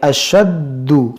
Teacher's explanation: یہاں پر یہ حمزہ ساکنہ ہے اور یہ دال مشدد ہے، یہاں پر دال مشدد ہے، اس کو ہم جماؤں کے ساتھ پڑھیں گے، اشد، خوب جماؤں کے ساتھ.